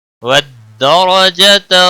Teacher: دال کے اوپر تشدید ہے، تھوڑا سختی کے ساتھ پڑھیں، را کو زبر کی وجہ سے پر پڑھا جائے گا، جتر را کے اوپر زبر ہے اس لیے را کو پر پڑھا جائے گا، موٹا پڑھا جائے گا۔